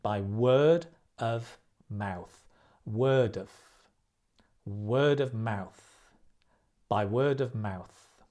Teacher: notice the off becomes of because we're stressing the mouth